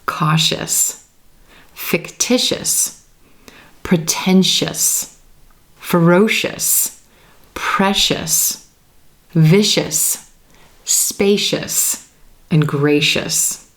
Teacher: the T in the I or the C in the I become the SH sound and the suffix is us, us.